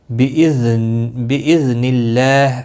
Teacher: یہاں پر بِإِذْنِ اللہ، اللہ کا لام اب زیر کی وجہ سے باریک پڑا جائے گا، نِلَّہ، نِلَّہ نہیں پڑھنا ہے، تو جب بھی پیش یا زبر ہو تو پھر موٹا پڑا جاتا ہے اللہ کا لام، اس کے اوپر کھڑی زبر بھی ہے، ایک الف کے برابر کھینچ کر پڑھیں گے، ہاں ساکن پڑھا جائے گا۔